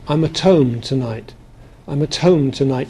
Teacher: The H in home drops out and the T moves into the beginning of the next word. · So he's got a little bit of aspiration here after the T. It looks as if you're saying I'm atone tonight.